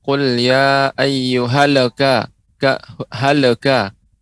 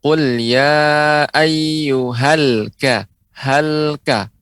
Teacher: huruf lam tidak boleh juga memantul